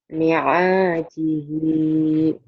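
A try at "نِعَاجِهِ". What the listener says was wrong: Bukan. Bukan. benar tapi panjang pendeknya belum pas. Jadi panjang pendek ini harus dilatih karena dalam Quran panjang pendek punya peranan penting.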